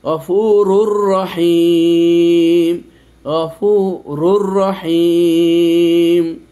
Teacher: এজন্য এই র কে এই র এর ভেতরে ঢুকিয়ে দিয়েছি আমরা এদগাম করেছি কিন্তু গুন্না করিনি · তারপর দেখেন এই যে গফুরুর রহিম, গফুরুর রহিম, এই যে তানবিনের পর র এসেছে, এই প্রথম রটাতে কিন্তু দুটো পেশ রুন, গফুরুন, তারপর র এসেছে, এই জন্য এই রকে এই রর ভিতরে ঢুকিয়ে দিয়েছি, আমরা ইদগাম করেছি কিন্তু গুন্না করিনি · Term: গুন্না ছাড়া এদগামের, গুন্না ছাড়া ইদগামের